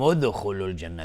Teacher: دال اینجا قلقله میخواد چون ساکنه